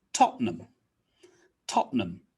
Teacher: So you might think it's Tottenham Court Road, Tottenham Court Road, but that's not really correct. Tottenham is 3 syllables. We cut it down to just 2.